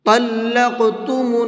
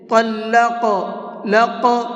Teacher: اب دیکھیے قاف حروف قلقلہ میں سے بھی ہے اور اس کے اوپر جزم بھی ہے، تو یہاں قاف کو ہلکا سا ڈبل آواز کر کے پڑھیں گے، اور ڈبل آواز کر کے پڑھنے کو ہی قلقلہ کہتے ہیں۔ جیسے طلق، لق، یہ جو بعد میں آواز نکل رہی ہے اس کو قلقلہ کہتے ہیں۔